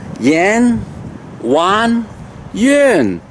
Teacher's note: The front nasal sound, an, A-N, on. The an itself is not an, on. So the sound is from the nose. And then it's come out the yi, three of them together.